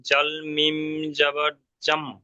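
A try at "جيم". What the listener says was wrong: হ্যাঁ, এখানে জাল মিম এগুলো তিন আলিফ করে টান, তো তিন আলিফ টান দিয়ে আপনাকে বলতে হবে।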